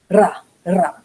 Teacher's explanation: Some Hebrew speakers will roll the R in the front, especially if they're singing, and this is also perfectly correct.